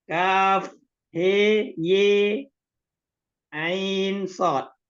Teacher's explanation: 6 harokat, kafnya, ainnya 6 harokat, sodnya 6 harokat, hasamanya 2 harokat. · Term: dibaca sempurna